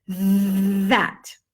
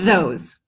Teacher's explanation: I want you to extend the th feel that vibration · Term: buzz th